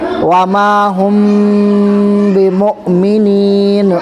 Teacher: میم ساکن کے بعد با آ رہا ہے اس لیے اخفاء کے ساتھ پڑھیں گے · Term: اخفاء میم ساکن